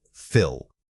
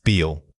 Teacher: The difference is in the vowel length. Is it a short tight I or a long drawn out e?